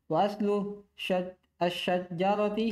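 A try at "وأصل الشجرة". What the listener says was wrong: Kenapa tasdid jimnya?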